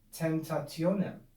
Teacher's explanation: how much easier it is to articulate the word when the M and the P have been replaced by the N